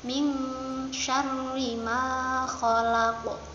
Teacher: Nun bertemu shin. Apa ayo? Ikhfa, dibacanya samar-samar.